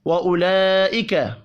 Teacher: یہاں پر بھی لام کے اوپر بڑی مد ہے, 5 الف کے برابر کھینچ کر پڑھیں گے.